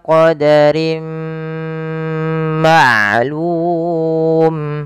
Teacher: memasukkan tanwinnya ke huruf mim dan ditahan dua harakat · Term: Idam Buna